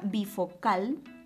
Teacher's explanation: lleva la mayor fuerza de voz en la última sílaba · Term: aguda